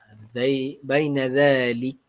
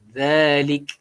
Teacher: Kaf tu bila dia mati pada hujung ni, dia perlu kepada keluar sikit angin.